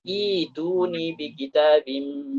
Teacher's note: Tapi bagaimana cara kita memulainya? Nah, cara kita memulainya adalah dengan mengubah hamzahnya menjadi huruf ya.